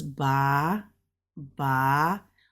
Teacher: it's a first tone so it's flat